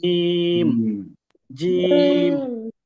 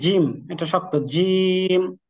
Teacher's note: এই জিমটা একটু শক্ত হবে, আমাদের জিহ্বার মধ্যখানটা ঠিক উপরের তালুর সাথে লেগে শক্ত আওয়াজ হবে